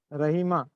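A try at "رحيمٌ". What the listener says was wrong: نہیں ایسا ہی بولنا ہے, رحیمانی ہے, تنوین ہے, تنوین میں ان ان کی آواز آنی چاہیے. تنوین ہوگی تو ان نون کی آواز آتی ہے تنوین میں. رحیمانی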